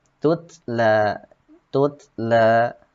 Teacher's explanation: maka wajib diizharkan ataupun dibaca jelas ta yang keduanya